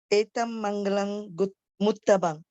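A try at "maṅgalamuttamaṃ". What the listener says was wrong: Okay, Muttamang. Not Guttamang, huh? M, not G. Muttamang.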